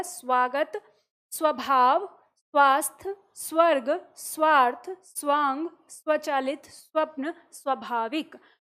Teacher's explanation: हमें भले ही उ वहां पर सुनाई दे रहा है लेकिन वो क्या है स्व है